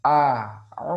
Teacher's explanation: harusnya Hamzah itu dibaca dengan jelas keluar dari tenggorokan yang terjauh